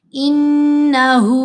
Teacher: نون پر ہم نے غنہ بھی کیا اور ہا کو 2 حرکات کی مقدار لمبا بھی کیا